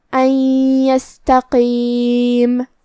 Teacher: ہمیں نون ساکن کو یا میں ملاتے ہوئے غنہ اور تشدید کے ساتھ یہ حکم کو ادا کرنا ہے · قاف کی ادائیگی زبان کے جڑ اور تالو کے نرم حصے سے ہے. قاف حروف التفخیم میں سے بھی ہے تو ہمیں اسے بھاری آواز میں پڑھنا ہے. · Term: ادغام بغنہ